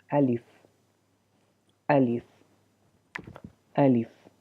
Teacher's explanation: تو الف یہاں سے ادا ہوتا ہے، الف الف الف، ٹھیک ہے۔ تو اس طرح منہ کے خالی حصے سے الف ادا ہوتا ہے